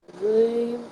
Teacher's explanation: Backside of the upper tooth. And make your lips a little bit rounder while saying Zim to make it heavy.